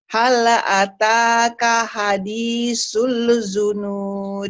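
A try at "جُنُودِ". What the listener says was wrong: Jimnya keras. Juju. Si Juju. Si Jae. Si Juju. Keras. Hal ataka hadithul junud.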